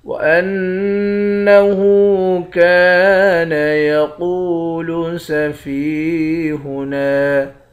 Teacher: کاف کے بعد الف ہے، ایک الف کے مقدار کھینچیں گے۔ قاف کو موٹا پڑھیں گے، واو کے ساتھ ملا کر ایک الف کے مقدار کھینچ کر پڑھیں گے۔ فا کو یا کے ساتھ ملا کر یا کو بھی ایک الف کے مقدار کھینچیں گے۔ · وَأَنَّهُ كَانَ يَقُولُ سَفِيهُنَا، حمزے کو نون مشدد کے ساتھ ملا کر نون پر غنہ کریں گے۔ ہا کے اوپر الٹا پیش ہے، ایک الف کے مقدار کھینچ کر پڑھیں گے۔ کاف کے بعد الف ہے، ایک الف کے مقدار کھینچیں گے۔